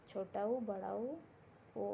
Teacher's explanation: ओठ जो होता है, ओठ गोल होता है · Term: वृत्तमुखी